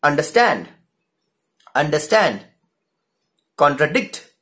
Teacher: they have three syllables where the accent is only on the final syllable. Understand, anapest, this is anapest foot.